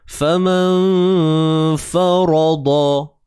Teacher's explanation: ikhfa, sembunyikan nun mati ini. Jangan sebut nun tepat pada makhrajnya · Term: ikhfa hakiki